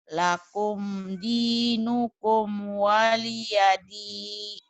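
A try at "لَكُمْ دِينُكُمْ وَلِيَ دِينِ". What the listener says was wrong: ni-nya pendek. Lakum dinukum waliyadini.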